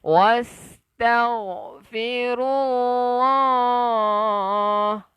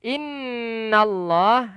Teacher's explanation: Allah lafzul jalalah, lafaz yang agung. Kita panjangkan 2 harakat.